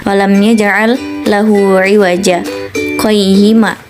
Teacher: Di antara lafaz iwaja dan qayyima terdapat bacaan sakta, yaitu berhenti sejenak tanpa bernafas